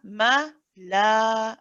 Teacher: If you're reciting it the way that I'm reciting it and you're stopping here and you're making use of this waqf, then you'd stop with the lam. It is a mad iwad, it's harakatain, it's 2 counts.